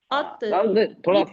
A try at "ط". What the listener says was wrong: थोड़ा अब आया नहीं ता आ रहा है आपका, कहीं तो आ रहा है, कहीं ता आ रहा है, नो प्रॉब्लम। प्रैक्टिस करना पड़ेगी, डिफिकल्ट है ना, तो बिना प्रैक्टिस के नहीं आएगा ना, कि हमें हैबिट नहीं है ना इसकी।